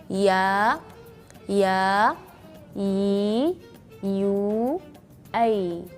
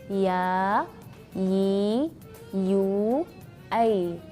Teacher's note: perhatikan tidak ada angin yang berlebihan, bukan hams, tapi jahr, yaitu nafas yang ditahan.